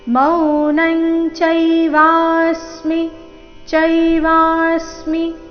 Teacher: ಚೈವಾಸ್ಮಿ ವ ದೀರ್ಘ ಬಂದು ನಂತರ ಆಘಾತ